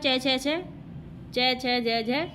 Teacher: च छ छ, च छ ज झ, ये तालव्य ध्वनि होते हैं